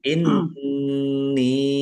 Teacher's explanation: Nun tasdid dibaca ghunah. ditahan biar tampak mendengungnya. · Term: gunnah